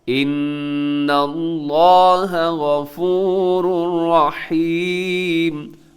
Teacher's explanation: لفظ اللہ موٹا پڑے گا کیونکہ اس سے پہلے نون کے اوپر زبر ہے